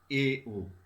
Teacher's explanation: এ ও উচ্চারণ করতে গিয়ে দেখো আমাদের জিভটা একটু নিচে এসছে, অর্থাৎ এ ও হচ্ছে উচ্চ মধ্য স্বরধ্বনি উদাহরণ।